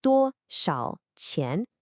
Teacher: 多 is a high flat first tone. Shao is a third tone that dips down and then rises, and qian is a rising second tone. 多 少 钱. A lot of students make the mistake of saying this too flatly, which can sound a little demanding.